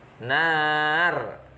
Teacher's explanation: Kemudian terakhir nar, ada mat ngarit li sukun, mat tabi'i jatuh sebelum huruf yang diwakofkan. Cara membacanya panjang 2-6 harokat.